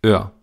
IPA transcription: øɐ̯